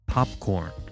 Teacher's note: the English word popcorn, which has both aspirated onset P and unreleased coda P